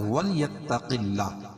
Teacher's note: اللہ کے نام سے پہلے زیر ہو تو اللہ کا نام باریک پڑھا جاتا ہے